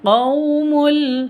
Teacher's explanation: qaumu ini sifat lin, tidak perlu dipanjangkan. Qaumul, seperti itu, pendek.